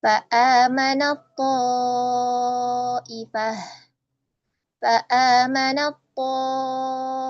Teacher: Tidak ta tetapi to. To yang isti'la, ya. Seperti itu, isti'la, ya. Yang tebal.